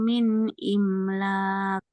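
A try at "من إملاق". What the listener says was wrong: Qalqalahnya mana? Min imlaq.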